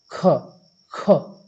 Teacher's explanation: ख को बोलने के लिए हमको क्या क्या आवश्यकता पड़ रही है क और ह लगाना पड़ रहा है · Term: महाप्राण